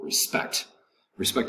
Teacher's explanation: respect has two syllables the accent over the second syllable